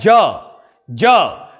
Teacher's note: ज में हमारी जिह्वा हमारी तालू को स्पर्श कर रही है